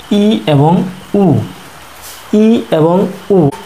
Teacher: যেমন ই এবং উ, ই এবং উ এই দুটি মৌলিক স্বরধ্বনি উচ্চারণ করার সময় আমাদের জিহ্বা আমাদের মুখগহ্বরকে সম্পূর্ণ ভরাট করে ফেলে, অর্থাৎ আমাদের জিহ্বা আমাদের মুখগহ্বরের সর্বোচ্চ অবস্থানে থাকে, এর ফলে আমাদের মুখগহ্বর সম্পূর্ণ ভরাট হয়ে থাকে, অর্থাৎ মুখগহ্বরে ফাঁকা থাকে না। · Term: সংবৃত্ত স্বরধ্বনি